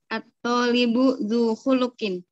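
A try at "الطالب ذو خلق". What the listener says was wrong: Mudah ya? Gak masalah.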